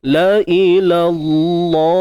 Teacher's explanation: Kalimah Allah kita baca dengan taghlidh, tebal, kerana sebelumnya berbaris atas.